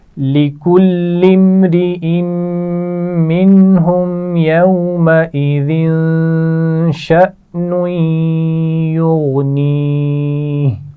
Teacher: شأنوی، یہاں پر حمزہ ساکن موجود ہے، جھٹکے سے پڑھیں گے. اور شأنوی، نون کو جب یا سے ملائیں گے تو یہاں غنہ بھی کیا جائے گا